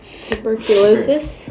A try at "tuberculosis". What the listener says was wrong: Tuberculosis, that's a difficult one. Yeah.